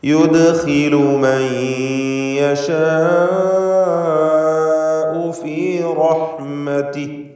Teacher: യുദ്ഖിലു ദാലിൻ്റെ സുക്കൂൻ ഖൽഖല സുഗ്റ നൽകി ശബ്ദം ചലിപ്പിക്കുക.